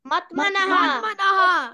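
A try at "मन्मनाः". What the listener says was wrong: Manaha. It should be man manaha, right? It is written mat over there. It should be man mana. Man mana.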